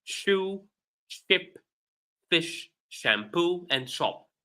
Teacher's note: While the SH, like in the words on the right of the screen, for words written with SH, we pronounce them sh, a simple sh without T